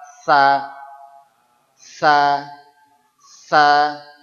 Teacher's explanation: dia wajib menempelkan ujung lidah ke gigi seri atas as tapi unsur es-nya tidak boleh hilang memang dia huruf es huruf es diucapkan dengan lidah ke atas